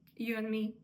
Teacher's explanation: він вимовляється без д